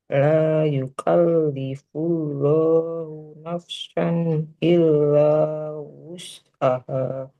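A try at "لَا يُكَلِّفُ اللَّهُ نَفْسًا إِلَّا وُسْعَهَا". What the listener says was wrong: Nafsan. Nah, fa-nya mengalir dulu sempurna baru ke sin ya. Naf nafsan. Jadi bunyinya nggak nafs, nggak kecampur. La yukallifullahu nafsan illa wus'aha.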